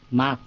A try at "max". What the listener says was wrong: Xì nó mạnh. No, chẳng cái hơi lại, đừng có mass.